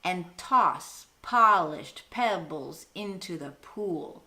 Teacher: It's got that almost iambic beat going for it.